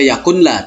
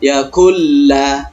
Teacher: Nun mati langsung masuk kepada huruf la, melebur menjadi satu. Kemudian tidak didengungkan, maka hukum bacanya idgham bila gunnah.